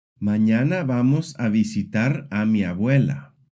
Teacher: Notice how every syllable gets about the same weight.